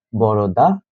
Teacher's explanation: বড় দাদা। এই বড় দাদাকে থেকে আমরা দ আকার ধ্বনি বাদ দিয়ে বড়দা করেছি। এটি হল আমাদের ধ্বনি পরিবর্তন।